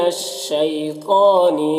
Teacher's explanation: شی میں یالین سے نرم آواز کے ساتھ جلد پڑھیں گے. تو حروف مستعلیہ میں سے پر پڑھیں گے، کھڑا زبر ہے، ایک الف کے برابر کھینچیں گے.